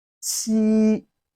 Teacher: the first tone of Chinese language, which is the flat tone